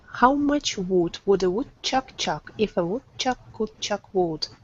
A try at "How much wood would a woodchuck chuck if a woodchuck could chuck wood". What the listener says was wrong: now the only issue is that your ooh was a little tight on the wood you want to make sure it's definitely a sound